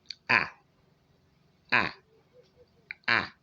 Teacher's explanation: your lips are spread, not round, and your mouth is wide open